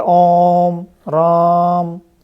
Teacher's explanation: जो पलुत हैं इनमें 3 मात्राओं का समय लगता है